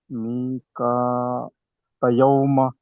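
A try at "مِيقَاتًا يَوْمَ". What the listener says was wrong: ఇదిగాం గున్నా చేయట్లేదు. మీ కా తయ్యోమ. గున్నా చేయట్లేదు అంటే మీరు దీర్ఘం లాగట్లేదు అని అర్థము. తా ఫతయా సుకూన్ తయీ. తై. ఇలా దీర్ఘం తీయాలి అక్కడ గున్నా చేయాలి.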